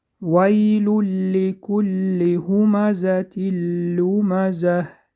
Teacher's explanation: ادغام بغنه به حرف لام در آورده خوانده می شود